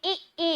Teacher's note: जैसे आप बोलेंगे ई, तो आप पाएंगे आपकी जीभ तालु वाले स्थान को पूरी तरीके से स्पर्श कर रही है।